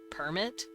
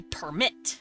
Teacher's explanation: Permit emphasizes the per sound, while permit puts a slight pitch on the end of it to make it sound more like a verb.